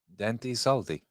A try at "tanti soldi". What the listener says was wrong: It's with a T. Starts with a T. T-A.